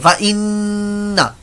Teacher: फ इन्ना, यहां नून मुशद्दद वाला गुन्ना हो जाए, तालु के साथ आपकी जो नून का मखरज है, समझाने के लिए तालु कह रहा हूं आपको, क्योंकि तालु के साथ जुबान लग जाती है, बात को मखरज का मालूम नहीं होगा, तो नून के मखरज पर हमारी जुबान लग जाएगी, बकायदा चिपटी रहेगी वहीं पर लगे